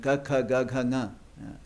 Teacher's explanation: But if these first 5, hard unaspirated, soft unaspirated, soft aspirated, and nasal, these are the way the first 5 vargas that we learn, ka, kha, ga, gha, nga. They're all coming from the throat with those 5 modulations, ending with the nasal